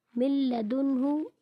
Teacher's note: اب یہاں پر بھی دیکھیں نون ساکن کے بعد لام حروف ادغام ہے حروف یرملون میں سے آ گیا اس لیے یہاں پر بھی غنہ نہیں ہوگا